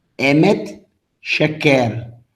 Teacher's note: Veja que são utilizados o segol, o som de E aberto.